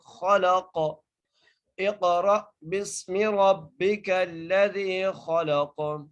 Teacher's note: قاف کو ہم قلقلہ کر کے پڑھیں گے، کیونکہ جب بھی ساکن ہو، یعنی جو حرف قلقلہ ہیں وہ ساکن ہو تو وہاں پر قلقلہ ہوتا ہے